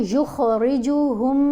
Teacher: تو ہم نے ہا کو مشدد میم سے غنہ کرتے ہوئے ملانا ہے